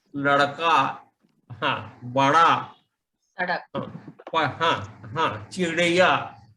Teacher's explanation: रेट्रोफ्लेक्स म्हणजे जीभ मागे वळते, टाळूला टेकली जाते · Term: सॉफ्ट ड